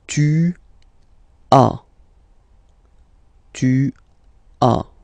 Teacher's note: as usual in French, final S is not pronounced